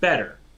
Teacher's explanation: There is a softish T that is essentially just a D, and you get it sometimes in the middle of words.